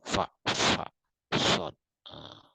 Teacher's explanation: ini keluarnya ini bunyi ini melalui arus udara saluran sempit, ada bunyi desis